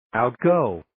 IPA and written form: aʊt'goʊ (Outgo)